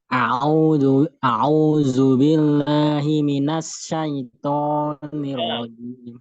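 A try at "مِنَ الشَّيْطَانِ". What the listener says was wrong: Shinnya kurang tebal, Pak. Himinasya.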